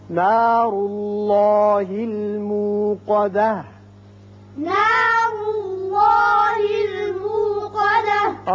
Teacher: را کے اوپر پیش ہے، ایک تو را پر ہوگا، دوسرے اس پیش کی وجہ سے اس میں اللہ کا جو لام ہے یہ بھی پر پڑا جائے گا